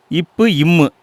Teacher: மேல் இதலும் கீழ் இதலும் பொருந்துவதால் பிறக்கும் எழுத்துக்கள்